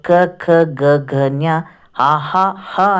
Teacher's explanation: ಕಂಠದ ಸಹಾಯದಿಂದ ಹುಟ್ಟುವಂಥ ಅಕ್ಷರಗಳನ್ನ ಕಂಠಾಕ್ಷರಗಳು ಅಂತ ಕೂಡ ಹೇಳ್ತೀವಿ